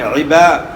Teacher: عباد اگر آپ پڑھتے ہیں تو وہ آپ حمزہ پڑھ رہے ہیں، عین نہیں پڑھ رہے، عبا پڑھنا ہے، عبا